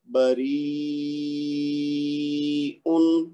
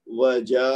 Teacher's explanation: مد واجب کرنی ہے جو کہ 4 سے 5 حرکت تک کھینچ کے پڑھنا ہے